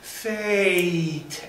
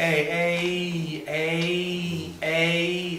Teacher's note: it goes from the a to the e